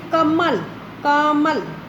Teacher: जैसे मान लो कई शब्द ऐसे होते हैं जैसे कमल, कमल, तो अब आप बोल के देखोगे तो आपको पता चल रहा है भी इसमें क और ल की अपेक्षा म के ऊपर अधिक बल दिया जा रहा है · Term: बलाघात